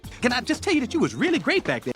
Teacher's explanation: So pay attention to the stress words, I, tell, and you.